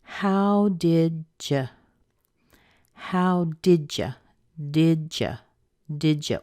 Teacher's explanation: we've got a D and a Y now that are together. We can make that into a J sound.